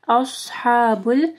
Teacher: صوت کو موٹا پڑھنا ہے، ہا کو گلے کے درمیانی حصے سے پڑھنا ہے